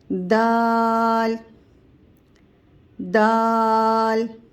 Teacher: जबान की नोक सामने वाले दांतों के जड़ में अंदर की तरफ जो जड़ है दांतों की वहां पर जबान की नोक को टच करेंगे